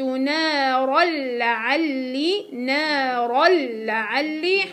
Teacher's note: حيكون عندي هنا إدغام بغير غنة كامل